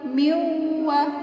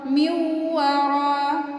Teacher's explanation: nun mati ketemu waw juga termasuk huruf idgham bi gunnah, berarti dengan dengung. Miwa ya, miunya ditahan dulu, jangan miwara ya.